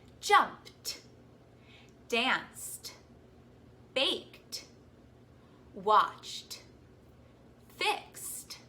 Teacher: So in a word like jumped, ed is making the t sound at the end.